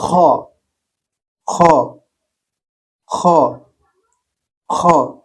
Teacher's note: দেখেন আমার গলার মধ্যে একটা গড়গড় শব্দ